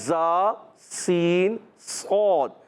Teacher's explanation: تو سیٹی کے ساتھ ادا ہوتے ہیں، اور ان کو حروف اصلیہ مخرج کے لحاظ سے اصلۃ اللسان، زبان کی بالکل باریک نوک سے نکلتے ہیں، اور صفت کے لحاظ سے حروف صفیریہ ادا ہوتے ہیں کہ سیٹی والے حروف